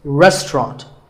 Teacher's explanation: The second syllable is just ta, and the third is ront, so restaurant. In British English, you might hear just 2 syllables,